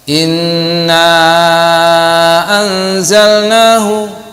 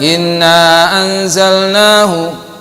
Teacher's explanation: Mad jaiz munfasil boleh panjang sampai 5 harakat, boleh juga tidak, boleh juga tidak. Inna anzalnahu panjang, boleh juga inna anzalnahu, nanya 2 harakat saja bisa, karena anzalna hamzahnya di lain kalimat.